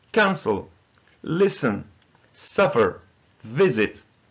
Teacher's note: It has two syllables, but the first syllable is stressed.